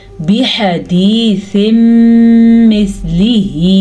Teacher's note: यहाँ पे इदगाम बिलगुन्ना हो रहा है, क्योंकि तनवीन के बाद यमून में से मीम आया हुआ है। इन दोनों को आपस में मिलाना है और गुन्ना करना है, इसी को इदगाम बिलगुन्ना कहते हैं। अच्छा, हा को मैंने लंबा किया क्योंकि हा के ऊपर मद है, और ये मद 2 से 2.5 अलफात के बराबर है।